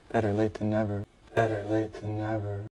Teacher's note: En la palabra better, tenemos la doble T, que se pronuncia casi igual a la R en español.